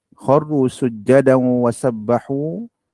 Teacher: Hukumnya idgham ma'al gunnah. Ya. Bacaannya dengung 2 harakat. Dengung 2 harakat.